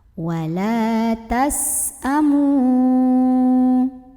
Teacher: sin punya sifat yang tidak memiliki lawan, namanya sifat sofir. Artinya ada desisan seperti suara ular ya.